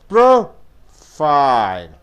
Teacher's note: profile being a noun, you have to stress the first syllable.